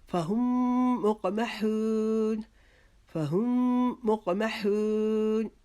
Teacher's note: فہم کو ہم آگے جو میم مشدد ہے اس کے ساتھ ملا کر ایک الف کے جتنا وہاں پر رکیں گے